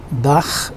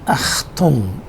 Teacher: But this is a very great problem for the English speakers, and it is pronounced with the back of the tongue and uvula. If you look at this diagram again, this is the back of the tongue and this is the uvula.